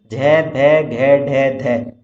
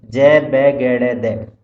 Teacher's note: वर्णों के उच्चारण में जो गूंजते हैं वो घोष कहलाते हैं